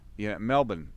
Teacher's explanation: with the accent we sort of like leave a bit of the r out of it